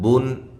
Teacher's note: یہ اظہار ہے، یہاں غنہ نہیں کرنا